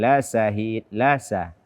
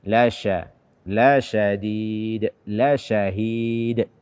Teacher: membaca shin tanpa tafasyi atau menggantinya dengan sin.